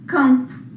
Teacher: Na palavra campo, para que serviu esse M? Para nasalizar o A. É como se eu tivesse, ó, entre barras, transcrição fonética, isso aqui, campo, tá?